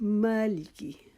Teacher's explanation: اب جو مالکی ہے اس میں ہم نے ماں کو لمبا کرنا ہے ایک الف کے جتنا. اس کو ہم نے مالکی نہیں پڑھنا, مالکی نہیں پڑھنا, مالکی.